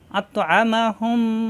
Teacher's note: আসছে মিম এখন আমরা কিভাবে পড়বো মিম সাকিনের পরে মিম আসছে এই মিমে তাসরিদ ধরে গুন্না করে মিলিয়ে পড়তে হবে এই গুন্নাটা হবে অনেকক্ষণ ধরে রাখতে হবে অর্থাৎ নাকের ভিতরে গুন গুন গুনগুন করে পড়তে হবে